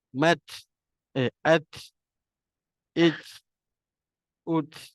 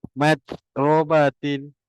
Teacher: jadi untuk huruf ta ni nafas dia terlepas